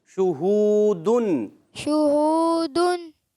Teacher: آخر تک آپ نے ہونٹوں کو گول رکھنا ہے